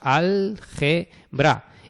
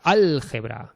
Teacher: la intensidad recae en la antepenúltima sílaba, que es la tónica